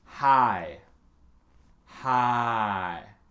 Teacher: il faut prononcer le H au début et ne prononce rien à la fin